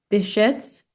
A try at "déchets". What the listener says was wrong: Et pas déchets, mais pas de le T et le S. À la fin des mots, on dit jamais le S et le T.